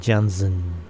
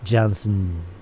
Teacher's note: el schwa, esta vocal centralizada, se deja de lado y casi que la N se comporta como un sonido vocálico.